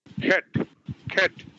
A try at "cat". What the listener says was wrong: খ্যাট। খ্যাট, এটা কিন্তু লং না, শর্ট এ। খ্যাট।